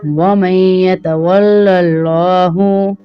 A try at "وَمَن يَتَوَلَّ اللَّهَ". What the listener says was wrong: وَمَن يَتَوَلَّ اللَّهَ پڑھیں گے یا اللہ؟ زبر ہے نا اس کے اوپر. وَمَن يَتَوَلَّ اللَّهَ وَمَن يَتَوَلَّ اللَّهَ